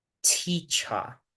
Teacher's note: el énfasis está primero en la primera sílaba, T, T, y luego decae en la segunda sílaba.